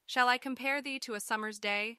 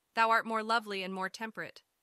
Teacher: notice how each line has 10 syllables with the stressed syllables falling on the second beat of each iambic foot this creates a pleasing Rhythm and helps to emphasize certain words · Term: iambic pentameter